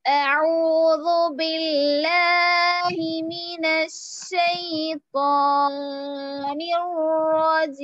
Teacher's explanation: तो रजीम में हम 5 काउंट्स भी कर सकते हैं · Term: आरिद वक्फी